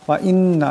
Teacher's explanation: এখানে নুন মুশাদ্দাদ, এখানেও একালি পরিমাণ নুন মুশাদ্দাদের গুণ্য হবে